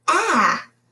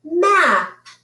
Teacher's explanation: A closed syllable word means that this A is going to be short and it is going to say ah.